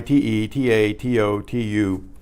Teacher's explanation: you'll notice how each vowel is its own pure sound